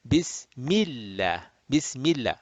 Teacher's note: And if the it's a fatha or dhamma, then lamul jalala will be rounded heavy. If the preceding letter has a kasra, then the lamul jalala will be flat